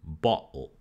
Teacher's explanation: in english we have stops transforming into glottal sounds like in bottle